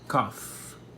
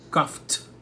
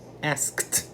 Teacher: Cada final de palavra aqui termina num som desvozeado ou surdo. Então, nós temos o F, por exemplo, da palavra cough, que é o verbo tossir.